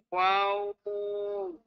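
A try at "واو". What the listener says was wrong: Tak kena. Tak kena. Dia tiga huruf tulisan namanya. Waw, alif, waw. Panjang betul mana?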